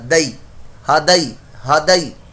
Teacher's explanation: یا ساکن سے پہلے دیکھیے زبر ہے تو یہ یا لین ہے, لمبا نہیں کرنا